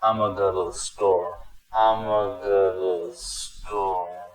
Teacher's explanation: My informal variation of that sentence completely replaced the words I am going to with I'ma,